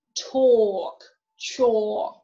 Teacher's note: A plus L plus consonant, so the letter A is going to be pronounced as O, as in all, soul. A plus LK, l is silent, and the O long